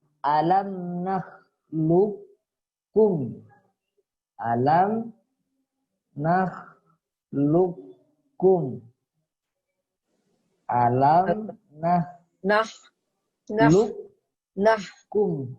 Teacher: di sini kan ada qaf bertemu kaf, ya kan? Maka ini langsung dimasukkan ke kafnya. Jangan dibaca alam nakhluqakum, tidak ada. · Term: Mutaqoriben